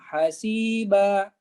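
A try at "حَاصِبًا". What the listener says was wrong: Hasibah. Hanya panjang Pak ya.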